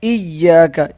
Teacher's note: یہ یا پہ تشدید ہے، اسے سخت بھی کریں گے، ایک الف کے برابر ہم کھینچ کے بھی پڑھیں گے